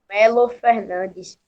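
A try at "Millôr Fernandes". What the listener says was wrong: escritor Milô Fernandes. Milô. acento no O, Milô Fernandes.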